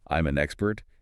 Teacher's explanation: the M sound from I'm will link to the A of an, and the N sound of an will link to the E of expert. It comes out sounding more like I'm an expert. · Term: linking